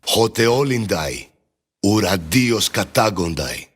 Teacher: he makes it an ND sound instead of an NT sound, to use the Roman alphabet letters as a comparison.